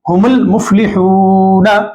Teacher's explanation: یہاں پر هم المفلحون میں بھی الف نہیں پڑھیں گے